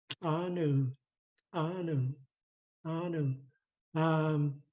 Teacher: the TL snaps down. Our tongue is hiding behind our upper front teeth.